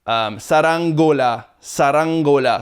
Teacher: So that in between the ng and the g would be I think a glottal stop, if I'm not mistaken.